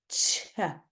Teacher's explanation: a posive and then they end as a frickative crazy so a cha starts as a t and ends as a sh · a ch starts as a t and ends as a sh. If you say ch in a really slow motion, if you imagine you're in slow motion, you'll hear it starts as a t and ends as a sh. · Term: affricate